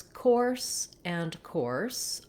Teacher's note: We have just the or diphthong in these words, starting with the k and ending with the S sound.